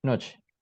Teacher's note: La voyelle O est prononcée comme une voyelle demi-fermée arrière O